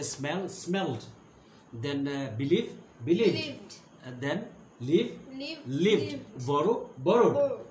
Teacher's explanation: we pronounce d after all voiced consonants and after all vowels.